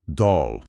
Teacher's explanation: o L no final se pronuncia como um L só, mas é o que chamam de dark L · Olha, é um som que pode variar um pouco lá nos Estados Unidos, mas geralmente é um O mais aberto e mais para trás na boca. Parece que o nosso O em só, mas talvez um pouco mais arredondado. Não é o O fechado de avô, de jeito nenhum.